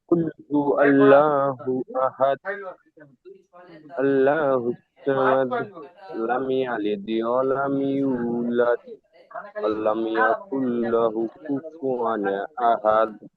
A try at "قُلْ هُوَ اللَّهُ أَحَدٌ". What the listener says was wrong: মাশাআল্লাহ, তবে টানগুলো একটু ভালো করে দিতে হবে, ঠিক আছে।